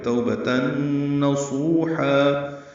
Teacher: توبہ میں مولین ہے, با کو جلدی ادا کریں گے. تنوین کے بعد نون آنے کی وجہ سے توبتن ادغام ہے, یہ غنہ ہوگا یہاں پہ